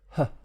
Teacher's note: glottis and there's at least one sound there huh the h it's a glottal fricative friction sound air kind of being pushed between the vocal cords